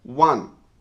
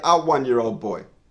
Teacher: Even though the word following the article starts with the vowel O, the sound is W, which is a consonant sound, one. So we say a 1-year-old boy.